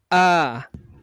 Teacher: Alif atau hamzah letaknya di tenggorokan bagian bawah atau pangkal tenggorokan. Jadi jika kita melafadzkan alif atau hamzah, daerah tenggorokan bagian bawah kita akan bergetar dan getarannya bisa dirasakan dari luar.